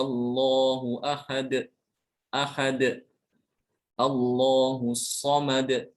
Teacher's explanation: Ada suara pantulan jadi begitu nempel ujung lidahnya ke Pangkal gigi langsung dilepas · ujung lidahnya itu langsung dilepas dari pangkal gigi seri. Maka akan terdengar suara qalqalah.